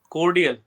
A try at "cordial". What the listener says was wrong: No, you are stressing O quite a lot. You don't have to stress on O so much. It is not cordial, it's cordial. Cordial Co. There is O and there's A. So it's cordial.